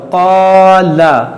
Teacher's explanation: अलिफ से पहले ये काफ हरूफ मुस्तालिया है, मोटा हर्फ है, तो ये काफ के साथ में अलिफ भी मोटा होगा